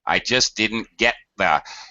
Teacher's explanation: our T is being folded into the D of didn't, as well as being reduced. So there's two reasons that just disappears.